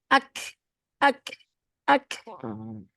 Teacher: Jadi yang kaf itu terbayang nggak kalau ketemu langit-langit yang keras